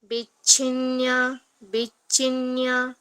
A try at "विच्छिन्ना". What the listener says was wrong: न्या नहीं है, विच्छिन्ना